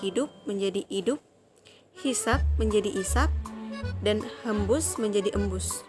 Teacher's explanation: fonem H, ini pada posisi awal sering ditinggalkan